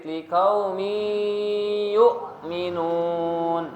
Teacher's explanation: jadi bacanya agak didengungkan dimasukkan huruf sebelumnya dengan huruf setelahnya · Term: Idgham bhunah